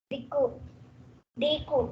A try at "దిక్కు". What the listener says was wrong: దిక్కు కాదు, దిక్కు, దీర్ఘం లేదు కదా, దిక్కు ఉంది. కూను గట్టిగా అనాలి, దిక్కు వేరు దిక్కు వేరు. అంటే మనకు కూకు కావతుంది, సో కాబట్టి ఈ కూని గట్టిగా పలకాలి, దిక్కు. అది కూడా ఏంది, కా సౌండ్ తోటే పలకాలి దిక్కు అనేది. సో ఇక్కడ ఇగో ఈ తేడా ఉంది.